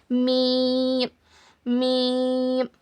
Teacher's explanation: हमारे दोनों होठों के बाहर वाले सूखे हिस्से से मीम अदा होता है। मीम मीम और इसको बारीक पढ़ना।